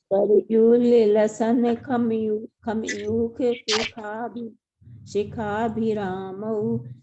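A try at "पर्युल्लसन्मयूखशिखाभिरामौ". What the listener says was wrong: देखो थोड़ी थोड़ी थोड़ी इसको सुधारना पड़ेगा। देखो ये अपन ने, ये अगर परयुल लसन बोलेंगे ना, परयुल लसन, तो वो थोड़ा सा उच्चारण में वो आएगा। तो अपन इसको क्या करेंगे, आधा ला को और इस ला को साथ में बोलेंगे, परयुल, परयुल, परयुल सन, सन खमयूख शिखाभिरामो।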